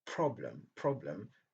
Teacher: Problem, c'est la première syllabe qui est accentuée